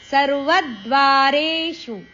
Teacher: ಸರ್ವ ವ ಅಕ್ಷರದ ಮೇಲೆ ಆಘಾತ